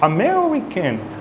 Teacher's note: when you are pronouncing the word American you want to stress the second syllable American right and the other syllables kind of compensate for that